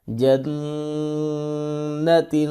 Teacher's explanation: جو نون پر غنہ ہے وہ تشدید والا ہے، سختی کے ساتھ کرتے ہیں، اور جو تا کے اوپر غنہ ہو رہا ہے اس کو اخفاء کو کہتے ہیں، اور یہ نرمی کے ساتھ کرتے ہیں